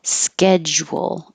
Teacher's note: I put a j because you do stop the airflow for a little bit